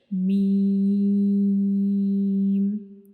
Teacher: हमारे जो होंठ हैं इनका खुश्क वाला हिस्सा, जो ऊपर वाले होंठ और नीचे वाला होंठ जो है, इन दोनों का जो खुश्क वाला हिस्सा है वो दोनों एक दूसरे को टच करेंगे तो मीम अदा होगा